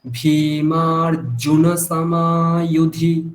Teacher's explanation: ওখানে জকারটা স্পষ্ট জকার, এখানে কোনো ইয়কার নেই